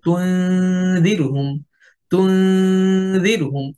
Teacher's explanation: গুন্নাটা পরবর্তী হরফ জালের মাখরাজে চলে যাবে। অর্থাৎ গুন্নার একটা অংশ পরবর্তী হরফের মাখরাজে গোপন হবে, কারণ আমরা ইকফা পড়তেছি, আর ইকফা শব্দের অর্থই হচ্ছে গোপন করা।